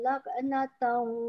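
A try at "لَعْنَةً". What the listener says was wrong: Dia punya ain tu macam pergi dekat ke tempat kof saya dengar. Laknatan wa yaumal qiyamah. Ha, dekat kof tu naik ke pangkal lidah. Itu jadi kof dah.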